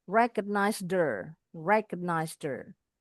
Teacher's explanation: Recognized ini bunyinya recognized her. Ini H-nya boleh dibuang. Kalau dibuang bunyinya jadi der.